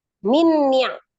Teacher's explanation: Atau juga idgham mutamasilain, nun ketemu dengan nun ya. Maka langsung ditasdidkan ke huruf nun yang kedua. Nun yang pertama dianggap tidak ada